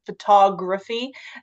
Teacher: So the way we say photography, we put the emphasis on the ta